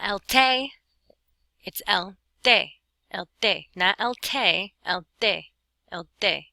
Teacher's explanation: it's a whole lot more like the letter D. It's a combination T-D sound. It's not quite like a D.